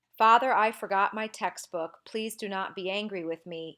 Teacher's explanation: the stress and the unstressed syllables alternate every other one and I began with a stressed syllable father I forgot my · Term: stressed unstressed